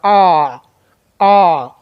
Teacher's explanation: जो मुंह अधिक खोलने पर बोले जाते